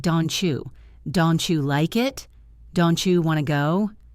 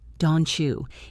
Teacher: The T in don't meets the Y in you. Together, they make a chi sound. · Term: assimilation